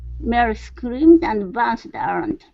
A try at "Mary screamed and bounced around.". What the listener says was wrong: Okay, now bounced is good. Let's fix scream. So give me a good CR here. Screamed.